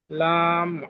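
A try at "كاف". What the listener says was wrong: লাম নয়, কাফ, কাফ। কাফ আলিফ, কাফ জি, কাফ আলিফ।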